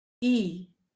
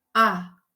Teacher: em i, a boca é mais fechada do que em a. Por mais que eu tenha esse fechamento distinto, a gente percebe que na vogal a voz ela não é ela não é impedida ou ela não é eh obstaculizada nem pelo dente, nem pelos lábios, nem pela língua.